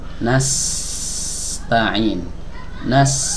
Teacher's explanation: ketika kita mengucapkan huruf Sin Nas ini terasa ujung lidah kita itu menempel ke dinding bawah ya bagian dalam dari gigi seri bawah